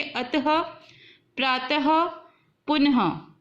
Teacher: पीछे ह की साउंड निकलती है थोड़ी सी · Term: विसर्ग